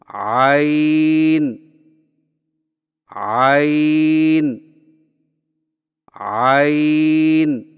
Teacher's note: जुबान की जड़ को हलक की तरफ मजबूती से दबाते हुए बारीक और रगड़ खाती आवाज में पढ़े · عین کی ادائیگی میں زبان کی جڑ کو حلق کی طرف مضبوطی سے دباتے ہوئے باریک اور رگڑ کھاتی آواز میں پڑھیں، یعنی عین عین عین۔